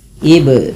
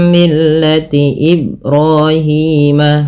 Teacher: Kemudian pada lafal Ibrahim ada huruf ba yang ditandai dengan warna biru. Ba di sini dibaca dengan bacaan qalqalah, yaitu artinya memantul. Apa yang dipantulkan adalah bunyi suara huruf ba-nya, yaitu ib.